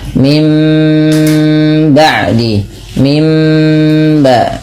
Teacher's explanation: dengan idbaq, dengan merapatkan bibir, atau dengan furjah, ada sedikit rongga yang diberikan untuk suara tadi. Kemudian sambil ditahan 2 harakat, mim ba'di, mim ba ya, ditahan dulu sepanjang 2 harakat. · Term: iklab